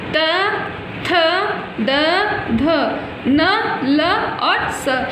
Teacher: इन सभी वर्णों का उच्चारण करते समय जीवा, जीभ दांत को स्पर्श करती है, अतः इन्हें दंतय वर्ण कहा जाता है।